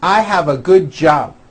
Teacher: you may be saying job without a b sound or the B is so weak you don't even hear it